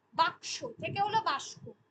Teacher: কারণ আমরা আসছিলাম, আমরা পড়লাম হলো ধ্বনি রূপান্তর, ধ্বনি রূপান্তরের পর এবার পড়াচ্ছি ধ্বনির স্থানান্তর বা বিপর্যাস যেটাকে আমরা বলছি, বা এই যে এটা যেমন বাক্স থেকে বাস্ক, পাশাপাশি দুটো ধ্বনির মধ্যে স্থান পরিবর্তন ঘটে যাচ্ছে, ঠিক আছে, দুটো আলাদা আলাদা ধ্বনির মধ্যে মানে পাশাপাশি যেটা রয়েছে সেটা আগে পরে হিসেবে বসছে।